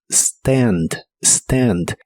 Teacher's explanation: pronuncia la a con el sonido que es la combinación de e y a